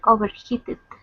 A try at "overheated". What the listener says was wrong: Overheated, maybe. Overheated. That's just an American pronunciation with a D sound instead of the T sound, but yeah, you did a nice job.